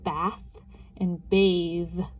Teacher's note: It's the difference between bath and bathe. Our tongue did the same thing, just turned our voice on.